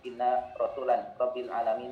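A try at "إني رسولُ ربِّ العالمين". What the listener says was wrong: Jangan ditanwinkan.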